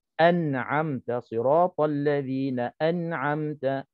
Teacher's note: nun mati bertemu dengan ain. Hukumnya izhar, baca tak dengung. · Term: izhar halqi